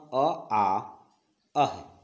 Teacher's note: इसका उच्चारण कंठ से होता है